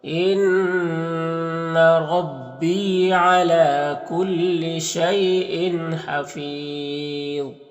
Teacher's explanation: ضا حروف مستعلیہ میں سے پر پڑھیں گے اور وقف کریں گے تو مد عارض وقفی ہوگا